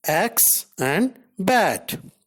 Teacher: A. A is a front unrounded vowel just below the half open position.